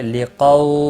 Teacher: واو لین ہے، تھوڑا نرمی کے ساتھ کھینچ کر ادا کریں گے۔